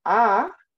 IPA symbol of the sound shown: a